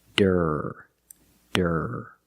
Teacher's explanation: it starts with a d and we use a real D with a voice